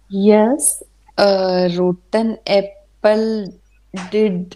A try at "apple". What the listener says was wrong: इसका आधा उच्चारण ना करें जी. एप्पल एप्पल एप्पल.